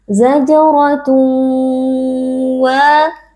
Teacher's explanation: karena ada tanwin yang bertemu dengan huruf wau cara membacanya adalah dengan mengidghamkan tanwin ke dalam huruf wau lalu dibaca dengan ghunah yang dipanjangkan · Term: idgham ghunah